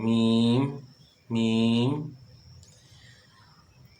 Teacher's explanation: اور میم جو ہے دونوں ہونٹوں کی بیرونی تری کے ملنے سے ادا ہوگی، میم دونوں ہونٹ جو ہیں وہ مل رہے ہیں